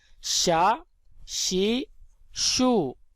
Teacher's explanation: شین کو ہم زبان کے درمیان اور تالو کے درمیان سے ادا کریں گے